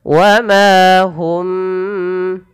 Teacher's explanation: Karena dia ada bacaan kita namakan dengan ikhfa syafawi. Mimnya ditahan. Wa ma hum, 2 harokat.